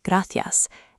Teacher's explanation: Importantly, the S remains crisp. · In Madrid, C before E or I and Z are pronounced as a th sound. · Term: distinción